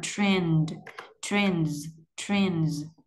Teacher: Sau khi nối tất cả lại mới bật âm tờ vô là trend, trend, trend. Âm d này là âm hữu thanh, có nghĩa là rung cổ họng. Cho nên chữ sờ ở đây mình sẽ đọc là âm z, âm z ha. Trend, trends, trends.